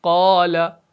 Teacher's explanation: मोटा पढ़ना है, लेकिन आपने इसको इस तरीके से मोटा नहीं पढ़ना कि आपके होंठ गोल हो जाए। · अलिफ मुफ़ख्खम की तफखीम उसको वाव के कुछ करीब कर देती है